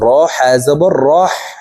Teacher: হার মাখরাজ হালকের মধ্যখান থেকে হবে তাই হার উচ্চারণ আমরা হালুকের মধ্যখান থেকে করব